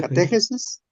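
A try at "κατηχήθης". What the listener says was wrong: No es que lo lees bien y luego le cambias el acento.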